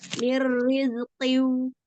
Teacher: nun sukun bertemu dengan huruf ro, idgham bila guna, dibacanya dilebur tanpa digunakan